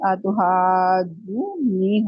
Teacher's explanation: पहले नून को साकिन करके अगले नून के अंदर उसको मर्ज कर देंगे, तो ये आतुहा जू नी हो जाएगा। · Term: इदगाम